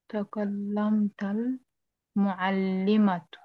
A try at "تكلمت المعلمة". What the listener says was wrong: The takallamatil muallima, there is a mistake here. We don't have any fatah here.